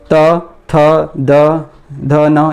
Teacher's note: त, थ, द, ध, न ये दांतों का स्पर्श करते हैं